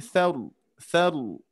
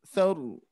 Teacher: tinggal huruf ro tafkhimnya ditingkatkan